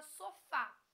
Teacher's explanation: identifiquei uma palavra oxítona terminada em a por exemplo a palavra sofá a sílaba tônica é a última